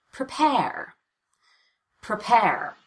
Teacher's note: the second syllable that gets all the stress and all the vowel and all the change in Pitch